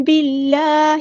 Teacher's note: ساتھ ملا دینا ہے، حمزۃ الوصل ہمارا ڈراپ ہو جائے گا، اللہ کا لام جو ہے یہاں پہ باریک پڑھیں گے ، اس میں جلالہ ترقیق ہو رہا ہے، باللہ، اسمائلی فیس